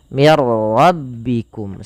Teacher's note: Nah, pada lafal mir rabbikum hanya idgham saja, idgham itu memasukkan. Maka nunnya dimasukkan ke ra dan tidak boleh ditahan.